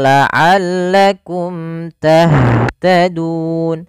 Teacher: Syafatani yaitu dua bibir. Maka huruf mim itu keluarnya daripada dua bibir kita. Dan mim ketika dia bertemu dengan seluruh huruf hijaiyah kecuali mim dan ba itu sendiri setelahnya, maka itu hukumnya izhar syafawi.